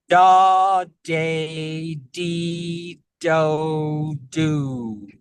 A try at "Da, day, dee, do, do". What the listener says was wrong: Excellent. Yes, the jaw stays more open and that palate with those vowels, and the tongue is doing most of the work there.